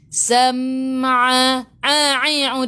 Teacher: a'i'u daripada kerongkong, bukan daripada hidung.